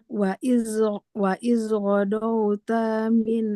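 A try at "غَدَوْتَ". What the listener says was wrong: Ghodau, jangan godau, goda, godauta.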